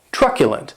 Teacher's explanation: this word has three syllables and the stress is on that first syllable keep in mind that that CU is pronounced it's like you're